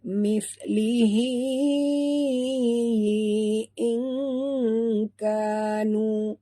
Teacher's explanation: Nun mati bertemu kaf, kita sorokkan bunyi nun ke dalam kaf disertai dengung dua harakat, ikhfa haqiqi, ya.